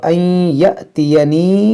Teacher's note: یہاں پر حمزہ ساکنہ ہے، جھٹکا ہوگا